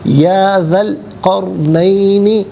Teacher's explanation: ذال الف زبر ذا، ذال پر زبر ہے، اسے القرنینی کی لام ساکن کے ساتھ ملائیں گے، درمیان میں سے الف یعنی حمزہ کو حذف کیا جائے گا۔ قرنینی میں را ساکن ما قبل قاف پر زبر ہے، را ساکن کو پر کر کے پڑھا جائے گا